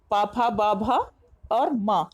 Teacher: ओष्ठ्य, प वर्ग के सभी वर्ण, वर्ग प फ ब भ और म, इनके उच्चारण में ओठ से हमारे आवाज निकलती है, तो इसलिए बिना ओठ के इसका उच्चारण हम नहीं कर पाएंगे, तो इसलिए इन्हें ओष्ठ्य वर्ण कहते हैं।